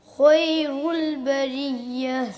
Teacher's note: خا کو موٹا کرنا ہے اور را کو بھی موٹا کرنا ہے